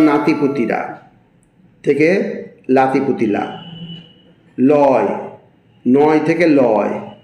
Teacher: র ও ন ধ্বনি অনেক ক্ষেত্রে ল ধ্বনিতে রূপান্তরিত হয়